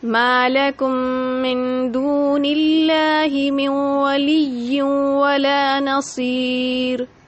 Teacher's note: یہاں پر ماں کو ہم نے ایک الف کے برابر کھینچا، دون اللہ، دو کو ہم نے ایک الف کے برابر کھینچا. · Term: مد اصلی